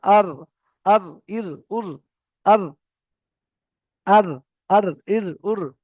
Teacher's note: এবারে দেখেন জীবের আগার উল্টো পিঠে চলে গিয়েছে দেখেন জীবের আগার উল্টো পিঠ আচ্ছা সাত থেকে 10 পর্যন্ত ছিল এই 10 এর উপর আর যাব না জীবের আগার উল্টো পিঠ এবং তার বরাবার উপরের তালুর সাথে লাগিয়ে জীবের আগার নিচের পিঠটা জীবের আগার নিচের পিঠটা যেখান থেকে নুন উচ্চারণ হয়েছে ওখান থেকে হবে র